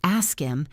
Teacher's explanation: Ask him probably sounded like ask him because the h in him often disappears in fast speech